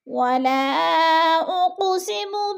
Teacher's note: ولا پہ مد منفصل ہے، 4 الفی مد ہے، اس کو 4 حرکات کے برابر ہم نے کھینچ کر پڑھنا ہے، کیونکہ حروف مدہ کے بعد حمزہ دوسرے کلمے میں ہے تو اس لیے ادھر مد منفصل ہو رہی ہے۔